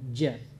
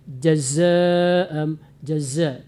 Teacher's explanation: Dia memang berdekat itu hurufnya, yang satu di tengah lidah, satu lagi anginnya kuat. Zai itu anginnya banyak.